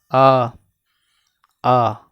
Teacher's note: जब आ बोलेंगे आप लोग तो मुख पूरा खुल जाएगा आपका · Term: विवृत